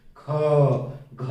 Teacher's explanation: लेकिन जरा ख और घ बोलिए, ख, घ, ज्यादा प्राणवायु निकल रही है, इसलिए इसको महाप्राण कहते हैं